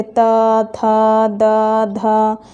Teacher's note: ये ऐसे वर्ण हैं जिनका उच्चारण दांत से होता है। दांत की सहायता से हमारा जीभ जो है वो दांत में जाकर टकराता है और इस तरह से इन वर्णों का उच्चारण होता है।